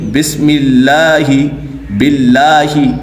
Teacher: اس میں جلالت اللہ عز و جل کے لام کو باریک پڑھیں گے، یعنی بسم اللہ باللہ تو یہاں پہ لام باریک ہوگا۔